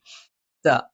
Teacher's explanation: നാവിന്റെ അറ്റം മേലെ മുൻബല്ലിന്റെ മുരട്ടിലാണ്